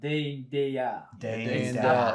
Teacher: with a Cockney accent, we drop the T at the end of words.